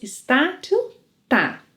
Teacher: To sound more natural, you know you can reduce “está” to “tá”, right?